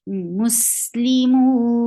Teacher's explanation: this temporary sukoon will affect the long vowel right before it and change it into 4 counts. So now it is 4 counts long now.